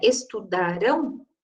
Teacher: E isso é importante também porque não só muda o significado, como muda, aí pensando foneticamente, muda a sílaba tônica, né? Estudarão, eu tenho a tônica na última sílaba